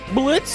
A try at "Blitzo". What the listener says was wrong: Don't say the O because the O is silent.